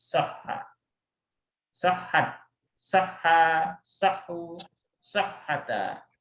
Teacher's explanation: Untuk orang ketiga umumnya huwa dan huwa humahum hiya huma itu diidghamkan. Maksudnya huruf kedua dan ketiganya disatukan sehingga menjadi huruf yang bertasydid